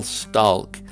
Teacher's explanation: rural utah tends to be pronounced with an l